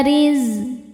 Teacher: Dibaca tarqik karena berharakat kasrah maka dibacanya tipis.